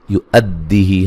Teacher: حمزہ کو دال سے سختی سے ملائیں گے